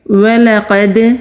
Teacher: وَلَقَدْ، واو ہونٹ گول کر کے لام کو جلدی ادا کریں گے، لا قد نہیں کریں گے ورنہ غلطی ہو جائے گی، ولقد لام کو ٹچ کر کے فوراً ہی قوف پر چلے جائیں گے۔ قوف مستعلیہ حروف میں سے ہے، دال ساکن ہے، قلقلہ ہوگا۔